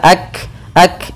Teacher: Kaf sukun itu punya sifat hams yaitu mengalirnya udara atau mengalirnya nafas kita